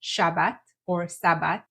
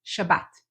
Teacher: And lastly, if you're saying Sabbath with a TH, change it to a T, Shabbat. SH, T at the end, stressing the last syllable